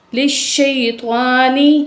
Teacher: بعض لوگ سین پڑھتے ہیں شین کو بھی، ٹھیک ہے، شین پڑھنا ہے